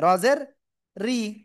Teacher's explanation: এরপরে র এর নিচে যদি জের হয় চিকুন করে পড়তে হয়